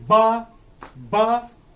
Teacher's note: b is voiced bilabial plosive consonant